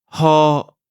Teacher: Toutefois, dans le sud, le R roulé est toujours à la mode, et dans le nord-ouest, autour de Chiang Mai, vous pourrez l'entendre prononcé comme un H à l'anglaise, ha. Notez bien que le R français n'existe pas, et donc même si vous le voyez dans une transcription, l'utiliser est toujours une erreur.